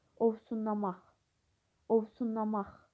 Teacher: Vurğu sondadır, yəni dördüncü hecadadır.